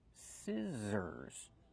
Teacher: We use the short I sound like this is scissors. The middle consonant is the Z sound, like zebra. Make the voice. Z. Scissors.